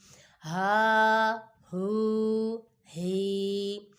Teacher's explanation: یہ والا ہا حلق کے نیچے والے حصے سے ادا ہوتا ہے